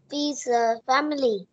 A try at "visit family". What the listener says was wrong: Visa hả con? Âm I với âm T đọc sao? Cái âm visit này nè, mình phải phát âm đuôi là âm T. Visit family. Visit family. Mình có thể phát âm âm đuôi nhưng mà nhẹ thôi ha. Nhấn âm đầu ha, family.